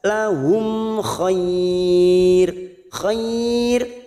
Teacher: Lahum mim sukun bertemu kha idhar safawi, kita baca jelas.